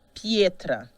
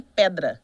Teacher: Então, o E vira IE. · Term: ditongação